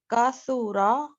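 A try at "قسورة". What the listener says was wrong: دیکھیے کاسورا نہیں, اس کو اور چھوٹا کریں, کسورا.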